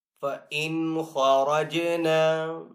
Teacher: فَإِنْ خَرَجْنَا، خا کو یہاں پہ پر پڑھیں گے حروف مستعلیہ میں سے، را کو پر پڑھیں گے، را کے اوپر زبر ہے اس لیے پر پڑھیں گے، جیم یہاں پہ حروف کلکلہ میں سے ہے، تو جیم کے اوپر کلکلہ بھی کریں گے۔